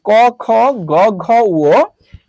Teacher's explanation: এই পাঁচটা বর্ণ উচ্চারণের সময় কণ্ঠ থেকে উচ্চারণ হয় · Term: কণ্ঠ বর্ণ